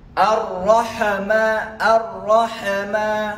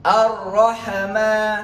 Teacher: Huruf ha mati, tidak ada sama sekali lantunan dia. Huruf lantunan hanyalah huruf qalqalah.